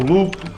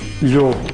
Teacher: em mirandês, passaram a pronunciar-se com lhe inicial, enquanto que em português se mantiveram com L